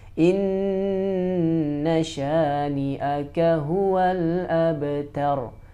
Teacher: Kita bacanya dengan gunnah yang ditempokan 2 sampai 3 harokat. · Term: Gunnah musyaddadah